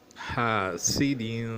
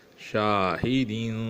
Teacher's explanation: کیونکہ یہ الف مدہ ہے، یعنی الف اس سے پہلے زبر ہے جو اس کے موافق ہے، اور اس کے بعد اسی کلمے میں حمزہ آ رہا ہے، تو اس الف کو 4 الف کے برابر یعنی تقریباً 4 سیکنڈ کھینچا جائے گا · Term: مد متصل